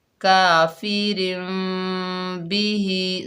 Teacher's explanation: ہونٹوں میں باریک جھری رکھ کر پڑھتے ہیں، یعنی ہونٹوں کو مکمل نہیں ملایا جاتا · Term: اخفاء شفوی